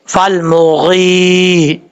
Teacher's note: یا مدہ سے مراد ایک الف کی مقدار، اس کو لمبا کر کے پڑھیں گے